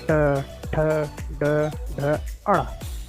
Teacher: आप जैसे ट बोल लीजिए तो देखेंगे कि हमारी जीभ जो है वो जो हमारी मुंह के ऊपर की छत है उसको पीछे की तरफ घूम के टच करती है। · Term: मूर्धा